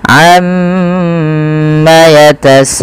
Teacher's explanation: harakat Amma baru dilepaskan Amma yatasaalun kemudian PS di sini ada mad wajib muttasil yang di mana kita harus memanjangkan bunyi sa sepanjang 4 atau Li harakat dan tidak boleh dikurangi tidak boleh